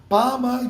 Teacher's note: இரண்டு எழுத்துக்களும் இதழ்கள் இணைந்தால்தான் பிறக்கும் பல் இதழ் இய வகாரம் பிறக்கும் கீழ் இதழும் மேல் பல்லும் இணைந்தால் வகரம் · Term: பகார மகாரம்